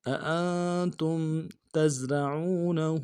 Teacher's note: تا کو زا کے ساتھ ملائیں گے، زا میں سیٹی ادا کریں گے